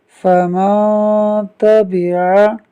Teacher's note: فا زبر فا، میم، نون زبر من، فمن، تا زبر تا، فمن تا، با زیر بی، فمن تبی، عین زبر ع، فمن تبع۔ یہاں نون ساکن کے بعد تا حروف اخفاء میں سے ہے، جس کی وجہ سے اخفاء ہوگا، یعنی نون ساکن میں غنہ کریں گے۔